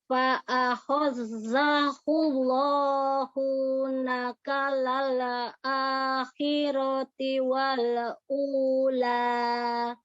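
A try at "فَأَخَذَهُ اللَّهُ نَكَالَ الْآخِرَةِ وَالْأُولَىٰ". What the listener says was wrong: Nah, lam sukun jangan memantul. Fa'akhadhahullahu nakalal akhirati wal ula. Selesaikan lam sukunnya. Mengalir aja, mengalir. Berikan sifat bainiyah pada lam sukun, tapi jangan memantul.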